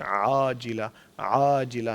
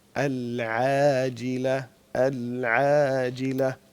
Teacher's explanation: ये ऐन जो है ये बारीक हर्फ है इसको मोटा करके आिला आजिला ना कहें अलजिला अलजिला और इसी